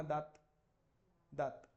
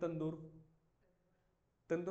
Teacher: तुमच्या जिभेचा शेंडा दाताला टिकतो